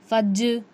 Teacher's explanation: जीम हुर्फ क़लक़ला में से है तो जीम पर क़लक़ला होगा · जीम, ज़बान के बीच वाले हिस्से से जीम अदा होता है